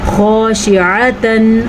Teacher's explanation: خا کو پر پڑھنا ہے کیونکہ خا بھی حروف مستعلیہ میں ہے. عین کے تلفظ کا دھیان رکھنا ہے, اور یہاں پہ اظہار ہو رہا ہے تو اظہار کا بھی خیال رکھنا ہے.